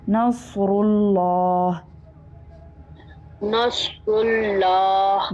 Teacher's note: را کے اوپر پیش ہے یہ بھی پور ہوگا، اور لام اسم جلالہ بھی پور ہوگا کیونکہ را کے اوپر پیش ہے.